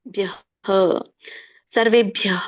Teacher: ಅ ಸ್ವರ ಇರೋದರಿಂದ ಹ ಕೂಡ ವಿಸರ್ಗ ಕೂಡ ಅ ಬರುತ್ತೆ